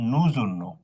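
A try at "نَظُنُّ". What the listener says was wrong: ওকে, কোথাও টান হবে না, আজুন্ন।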